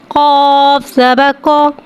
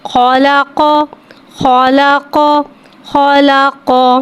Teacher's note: قاف کو ایک الف یعنی 3 حرکات کے برابر کھینچ کے پڑھیں گے۔ قاف حرف مستعلیہ ہے، لہذا اس کی آواز حلق سے موٹی ادا ہوئے گی۔ قاف کے اوپر زبر ہے، زبر کو منہ کھول کے ادا کر کے پڑھیں گے، قاف زبر کو۔